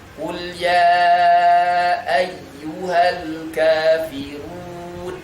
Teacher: Dhammah sama U, betul-betul huruf U. Jangan sampai kemudian berubah jadi O.